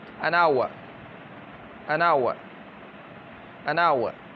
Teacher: لکھا ہوا تو ایچ ہے لیکن اس کا تلفظ نہیں ہو رہا، بلکہ تلفظ میں جو ہے واول کی آواز آ رہی ہے، تلفظ میں واول کی آواز آ رہی ہے۔